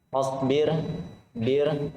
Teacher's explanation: ro tipis karena ro sukun diawali oleh kasroh.